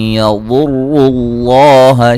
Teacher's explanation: یضر اللہ ضاد کو موٹا ادا کریں گے، را کو موٹا ادا کریں گے، را کو پر پیش ہے، اور یہ لفظ اللہ کو موٹا ادا کریں گے، اس سے پہلے حرف پر پیش ہے